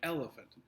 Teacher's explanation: the first syllable is emphasized it is stressed you stress that more when you say it